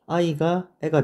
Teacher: 네, 애는 단모음입니다. 그래서 단모음 두 개가 합쳐져서 새로운 단모음이 되었기 때문에 얘는 모음 축약이라고 볼 수가 있습니다